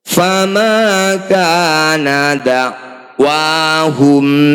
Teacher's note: famaanawahum Um ba mim sukun bertemu ba disebut bacaan Ikhfa Syafawi bunyi mim sukun kita dengungkan dua harakat · mim sukun bertemu selain mim dan ba disebut bacaan izhar syafawi mim sukun dibaca jelas tidak usah dengung